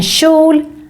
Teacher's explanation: when we have KJ together, it also makes this sh sound